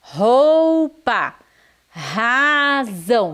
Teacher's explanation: o r é mais forte diferente das palavras que tem o r no meio